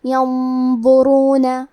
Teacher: کلمت ينظرون میں نون ساکن ہے، پھر حرف الضو ہے، ضو حروف الاخفاء میں سے ہے، تو ہمیں یہ حکم کو غنہ کے ساتھ ادا کرنا ہے · ضو کی ادائیگی زبان کے سر اور اوپر والے دانتوں کے اندرونی کناروں سے ہے. ضو حروف التفخیم میں سے ہے، تو ہم یہ حرف کو موٹی آواز میں پڑھیں گے.